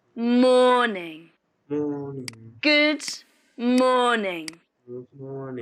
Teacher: stress on morning is on the first syllable morning good morning in this sentence the stress is on morning so you say it louder and longer